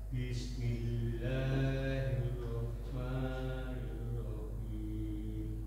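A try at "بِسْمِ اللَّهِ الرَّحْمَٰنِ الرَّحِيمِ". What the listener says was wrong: Ketika tasdid itu jangan ada jeda sedikit Pak. Ada jedanya sedikit.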